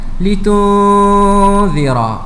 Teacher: Huruf nun yang mati berjumpa dengan huruf zal, hukumnya ikhfa hakiki. Perlu kita dengungkan bacaan dengan kadar 2 harakat. litunzira. Kalau kita baca tuan-tuan dan puan dirahmati Allah, litunzira, tanpa dengung, maka bacaan itu tidak tepat.